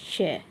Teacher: यह जो श है इसको मुर्धा से बोला जाता है